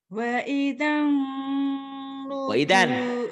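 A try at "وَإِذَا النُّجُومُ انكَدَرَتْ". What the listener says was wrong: Jangan waidan. N-nya tapi gunnah ditahan.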